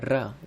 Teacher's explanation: क्योंकि र का जब आप उच्चारण करेंगे तो ऐसा लगेगा जैसे जीभ लुढ़क रहे, है ना। तो र के उच्चारण में जीभ लुढ़कती सी लगती है, र जो पलट कर ऊपर जाता है र, इसलिए र को लुंठित व्यंजन कहा जाता है।